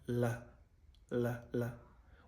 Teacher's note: the fully voiced sound la, la, la, which is a dental alveolar sound